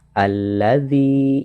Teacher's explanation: alif lam yang pertama tidak terbaca tetapi langsung dimasukkan kepada lam yang kedua. Alladzi. Jadi yang membedakan antara alif lam syamsiah dengan qamariyah adalah tasydid.